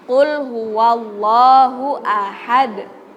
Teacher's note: karena dal itu huruf kolkolah, jadi harus memantul. Gak boleh kita baca qul huwallahu ahad, gak boleh.